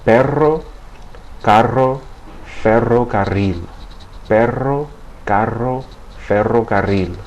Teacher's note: it's pronounced as a trill or a multiple flapping of the tip of the tongue against the ridge behind the top teeth as air passes over the tongue.